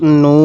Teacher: এরপরে নুন ওয়াও পেশ নু, এই যে পেশের পরে ওয়াও সাকিন এক আলিফ টানতে হবে, তাহলে নুন ওয়াও পেশ নু।